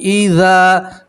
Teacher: ذال کے ساتھ الف مد ہے، اس لیے ایک الف کے برابر کھینچ کر پڑھیں گے